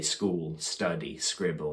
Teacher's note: without having an extra syllable at the start without adding that extra a sort of sound on the front we're happy to say school study scribble and words like that